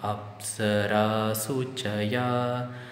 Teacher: Apsara, ra is middle pitch, and su is higher pitch.